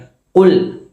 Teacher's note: കാഫിന്റെ മഹ്റജ് എന്ന് പറയുന്നത് നമ്മുടെ നാവിൻറെ അങ്ങേ അറ്റത്തെ ഭാഗം മേലെ അണ്ണാക്കിൽ മുട്ടിക്കുന്ന സമയത്താണ് ഈ കാഫ് പുറപ്പെടുന്നത്